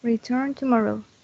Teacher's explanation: And in return tomorrow, it's like return tomorrow. The last N we don't say it. Okay. So we say return. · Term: Elision